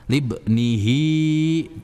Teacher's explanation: Nah, kalau bertemu dengan huruf ha besar dan itu biasanya ditandai dengan bulat ya, bulat bentuknya. Dan di akhir kata hi maka itu dibacanya dua harakat. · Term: mad silah qasirah